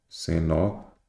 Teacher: cenozoico, a sílaba tônica é a penúltima, a paroxítono.